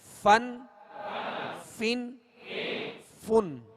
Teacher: اوپر کے سامنے والے دونوں دانتوں کے جو کنارہ ہے وہ نچلے ہونٹ کے تر حصے سے لگے تو فا ادا ہوتا ہے